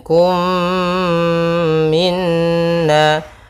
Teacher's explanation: ada mim mati bertemu dengan mim, hukum tajwidnya idgham mimi, yaitu mim yang pertama langsung masuk kedua dan ditahan suara umnya